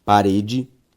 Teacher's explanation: perceba que a sílaba tônica de parede é o re